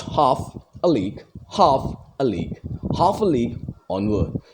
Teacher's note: We get stressed, unstressed, and unstressed.